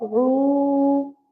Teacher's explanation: before Waw Sakin, whenever it is Dhamma, always we make 1 second long